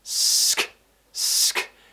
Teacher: So with this consonant cluster at the beginning, we're producing the s sound, then we're cutting it out with a k, sk, sk.